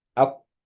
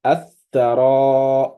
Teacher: the sun letters, the lam al-ma'rifa that comes before them, they are completely quiet. Nothing should be there. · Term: idgham lam al-shamsiyya